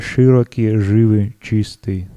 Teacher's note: Наличие твердого «и», широкий, живый, чистый, такое твердое произношение.